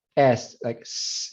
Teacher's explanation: you'll see that it's not the punta de la lengua, sino el predorso de la lengua. So predorso alveolar, and this is just a Latin American S.